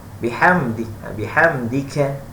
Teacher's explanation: Bihamdika, kan mesti hamas dipercikkan, dihembuskan